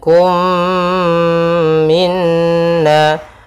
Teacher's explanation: Kemudian kum minna, ada mim mati bertemu dengan mim, hukum tajwidnya idgham mimi, yaitu mim yang pertama langsung masuk kedua dan ditahan suara omnya.